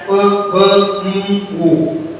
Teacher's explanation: ऐसी साउंड होती है जिसमें हमारे दोनों लिप्स एक दूसरे के साथ टच होते हैं और साउंड प्रोड्यूस होती है, तो ऐसी साउंड को हम बाइलेबियल साउंड कहते हैं, ठीक है।